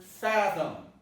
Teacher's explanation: fathom is pronounced with a stress on the first part. So this vowel becomes a neutral vowel because of the stress.